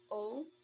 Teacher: o is a closed mid back rounded vowel